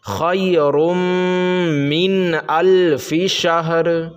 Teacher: نون ساکن ہے اور اس کے بعد حروف حلقی کے 6 حرفوں میں سے حمزہ ہے، تو اب اس نون کو ظاہر کر کے پڑھیں گے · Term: اظہار